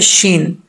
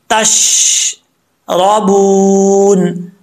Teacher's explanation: शीन का मखरज है ज़ुबान का दरमियान ऊपर वाले तालू से टच करे यानी मिले